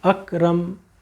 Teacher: اپنے دونوں ہونٹوں کو بند کر دیں گے اور جو آواز آتی ہے وہ ناک میں ہماری چلی جاتی ہے اور وہ میم پورا ہوتا ہے.